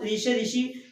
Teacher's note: मूर्धा से बोले जाने वाला एक स्वर होता है आपका, जिसे हम बोलते हैं ऋ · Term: मूर्धन्य